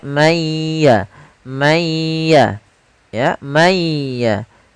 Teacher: ditahan suara gunah pada huruf yang setelahnya kalau dia di huruf Ya ditahan di ya-nya kalau di mim · suara nunnya dihilangkan sebagian tapi masih menyisakan sedikit huruf nunnya pada huruf wau maaf pada huruf ynya maka mayya mayya ya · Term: idgham, idgham bhunah